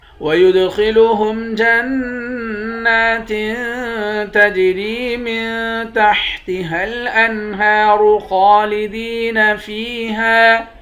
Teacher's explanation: دال پر قلقلہ کریں گے، خا کو موٹا پڑھیں گے، نون مشدد پر غنہ کریں گے